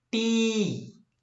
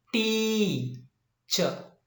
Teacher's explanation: T is pronounced longer, higher and louder